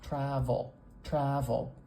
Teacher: really really really short there are two syllables travel travel but that schw is so stinking short it almost combines with that L · that L is not a light L where the back of my tongue is lowered but instead the back of my tongue is quite high in my mouth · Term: syllabic consonant